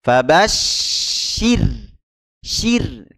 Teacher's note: kita tipiskan ro sukunnya karena huruf syinnya berharakat kasrah